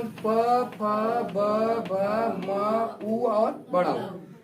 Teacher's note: ये जो वर्ड होते हैं किससे बोले जाते हैं आपके, ओष्ठ से।